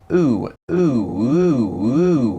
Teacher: Of course SSB has a non-back GOOSE, typically a diphthong